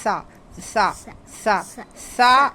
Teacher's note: یہ حروف لثویہ ہے اس کو زبان کی نوک اور اوپر کے دانتوں کے کنارے سے لگا کے پڑھیں گے